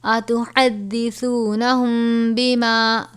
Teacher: قالوا اتحدثونہم، ہا ہے باریک پڑھیں گے، سا کو نرمی سے، میم ساکن کے بعد حرف با آ جائے تو اخفائے شفوی کا قاعدہ لگے گا، یعنی غنہ کریں گے